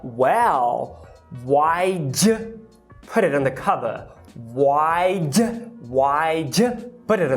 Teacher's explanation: O personagem reduz a palavra did para apenas um D, apenas uma consoante